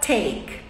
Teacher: a pronúncia da letra T é com a língua na ponta aqui atrás dos dentes da frente e soprando um pouco